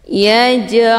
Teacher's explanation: sukun yang terdapat di pertengahan kalimat dinamakan denganq cara bacanya jimnya dipantulkan dengan pantulan ringan